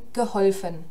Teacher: hier haben wir nämlich kein kurzes U mehr, sondern ein kurzes O in geholfen.